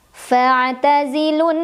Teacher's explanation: Sedangkan ketika tidak berhenti mad tabi'inya gugur, lu-nya pendek saja. Karena ada wawu sukun, huruf sukun ketemu sama huruf sukun awalnya ya. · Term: takhallus bil hadfi